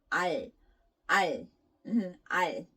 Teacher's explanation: after saying al, your tongue kind of touches the middle part of the top of your mouth. Not behind your front teeth, but like the middle part of your ceiling of your mouth. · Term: 리을